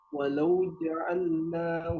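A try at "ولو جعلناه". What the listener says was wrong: Jangan walau ya, harful lin.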